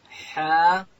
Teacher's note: ح ادا کیږي د ستوني په منځ کښې